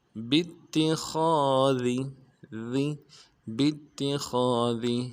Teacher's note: ذال کو باریک ادا کریں گے، ذال کو نرم سے ادا کریں گے